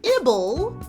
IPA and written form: ɪbᵊl (I B L E)